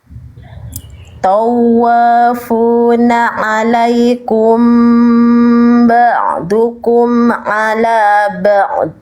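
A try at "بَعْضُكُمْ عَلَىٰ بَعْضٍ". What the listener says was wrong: Nah, dotnya jangan mati bunyinya. Kan di sini ada dotnya jadi sukun. Dot sukun itu suaranya harus ngalir. Salah satu kesalahan ketika kita melafalkan huruf dot itu, teman-teman sekalian, dibuka ya tadi dotnya jadi sukun ya karena berhenti.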